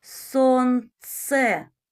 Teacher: Сонце, звук ц твердий, приголосний, позначається рисочкою.